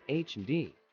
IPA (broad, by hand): ˈhændˌbæɡ